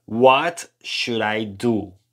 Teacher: esto quedaría algo así como should con una d muy suave